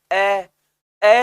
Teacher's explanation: ए में जीभ कहीं नहीं जाती, बीच में पड़ी रहती है।